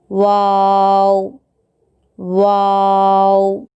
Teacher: वाव, होठों को गोल करने से वाव अदा होता है